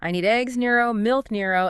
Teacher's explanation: You rise on each item to show more is coming. I need eggs, Nero, milk, Nero, and then you fall on the very last item to signal that's the end of the list.